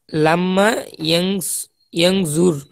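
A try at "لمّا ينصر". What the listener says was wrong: ইয়ানজুর, এখানে নেই ইয়ানসুর। ইয়ানসুর, লাম ইয়ানসুর, লাম্মা ইয়ানসুর। সদ এখানে জ না তো।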